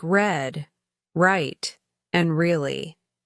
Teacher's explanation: the sound is produced by curling the tip of the tongue slightly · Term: R sound